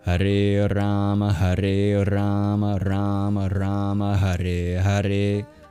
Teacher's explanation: So there's two long syllables in this mantra. There's the A at the end of Hare, and then there's the first A in Rama. Every other syllable is short, including both syllables in Krishna.